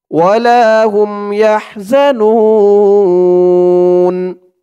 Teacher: পেশের পরে ওয়াও সাকিন, এক আলিফ টানটা 3 আলিফ টান হয়ে যাবে। নু বলে 3 আলিফ টান দিয়ে এই নুনকে ধরতে হবে। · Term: মধ্যে আরজি